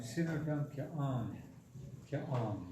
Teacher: Kia Ang is when you're asking a question, the voice goes down.